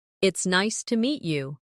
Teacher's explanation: stress nice and meet to make it sound warmer